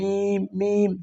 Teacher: মিমটা হচ্ছে ঠোটের শুকন জায়গা